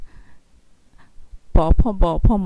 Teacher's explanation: প ফ ব ফ ম এগুলো কিন্তু ঠোঁটের সাথে ঠোঁট লাগিয়ে উচ্চারণ করতে হয় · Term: ওষ্ঠ ব্যঞ্জন ধ্বনি